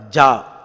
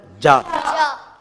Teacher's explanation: நாவுடைய நடுபாகம் மேல் முரசை போய் அழுத்தமாக தொடும்